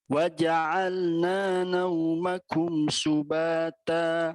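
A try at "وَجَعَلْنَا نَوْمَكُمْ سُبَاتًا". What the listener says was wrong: Patah buka lagi. Waja'alna, na tipis.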